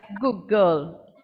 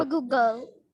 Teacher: the d at the end of good becomes like the g at the start of girl. It doesn't disappear, but it sounds like the next sound. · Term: assimilation